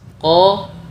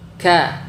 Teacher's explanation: Makhraj huruf qof lebih dalam dari makhraj huruf kaf, sehingga harus menghasilkan suara yang berbeda dari kedua huruf.